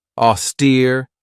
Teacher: This has 2 syllables, and the stress is on that second syllable with that long E sound.